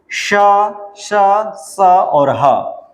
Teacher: इन व्यंजन का उच्चारण करते समय हवा कंठ से निकलकर उष्मा यानी गर्मी पैदा करती है, यानी घर्षण होता है। यानी इस व्यंजन का उच्चारण करते समय हमारे मुख में घर्षण होता है और उससे क्या होती है, जो है गर्मी पैदा होती है, इसलिए इसका नाम उष्म पड़ा। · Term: उष्म व्यंजन